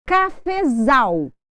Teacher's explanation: Nós tínhamos a sílaba tônica em fé, então ele se transformou em subtônica.